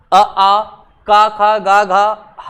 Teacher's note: इनका सबका उच्चारण कहां से होता है, गले से होता है, कंठ से होता है